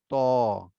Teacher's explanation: জিহ্বার আগা সামনে উপরে দুই দাঁতের গোড়ায় লাগাতে হবে